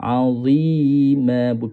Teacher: Huruf dha lidah kena berada di luar.